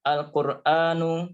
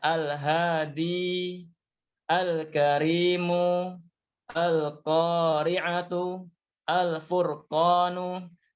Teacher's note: Alquran bertemu dengan qof yang mana qof adalah huruf Al Qomariyah sehingga Alif lamnya terdengar dengan jelas